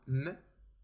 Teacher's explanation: the sound m can be described as a voiced bilabial nasal sound